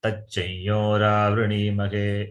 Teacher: Anuswara replaced by the nasalized yakara.